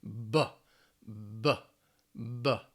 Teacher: B is a voiced sound. Lips are closed to stop the air, and it's aspirated.